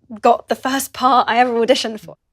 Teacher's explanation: does not lift her tongue at the end of the word got. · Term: glottal stop